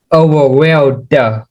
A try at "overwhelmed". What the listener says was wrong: Okay, you gotta stop saying overwhelmed. Da. There's no da with ed. It's just overwhelmed. Don't stress it. Overwhelmed.